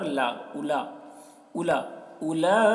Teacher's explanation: لام کو زیادہ کھینچیں گے کیونکہ مد بھی ہے کھڑا زبر بھی ہے